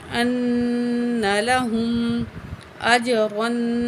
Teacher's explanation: نون زبر نا ان لام زبر لا ہا پیش میم ہم نون میں غنہ کریں گے نون کے اوپر تشدید ہے